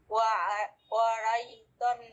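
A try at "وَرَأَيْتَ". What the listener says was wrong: ওয়ারাই হবে না, ওয়ারা দেখেন তারপরে একটা হামজা আছে, ওয়ারা আই।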